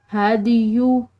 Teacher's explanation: हदियु दाल, ये भी हरूफ कलकला में से है तो हमने इसको हिलाते हुए अदा करना है।